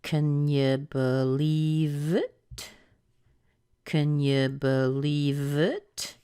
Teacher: and it's going up at the end